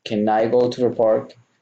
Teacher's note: Can I becomes like one word.